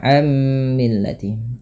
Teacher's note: dua harakat W yarabu am millati sama ketika kita membaca ammillati tidak lagi dibaca anmillati tapi langsung ke mim dan ditahan suara mimnya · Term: Idam